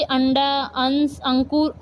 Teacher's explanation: इसका उच्चारण करते समय हवा नाक से बाहर निकलती है